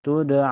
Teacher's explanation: Ini dipantulkan karena dal ini termasuk huruf qalqalah ya. Jadi hukumnya qalqalah sugro. · ada waw sukun sebelumnya harakat fathah dibaca lembut ya, dilunakkan saja